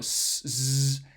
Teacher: um well it's a type of cornrow coronal fricative but it's a fricative in which you're sort of blowing air against the back of your upper row of teeth which it's a really loud or noisy fricative · air against the back of your upper row of teeth which it's a really loud or noisy fricative especially at high frequencies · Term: loud fricatives, strident consonants